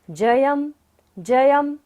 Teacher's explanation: युद्धे जयम, य के ऊपर बिंदी है और बाद में क्या है, व। य र ल व होता है बिंदी के बाद, तो बिंदी का उच्चारण क्या होगा, म।